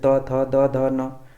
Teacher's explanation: दंत से त वर्ग के जितने सारे वर्ण है